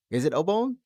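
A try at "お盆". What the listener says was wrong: The way that you pronounce it made it sound like bone or something.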